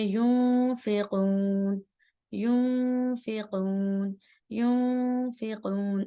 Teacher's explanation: نون کی آواز کو ہلکا سا چھپائیں گے اور ناک میں سے آواز نکلے گی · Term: اخفا